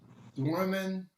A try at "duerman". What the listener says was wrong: Because you're saying duermen, and that's exactly what you got there, duermen. Now, I don't know if you meant to say that, because it should be Duerman.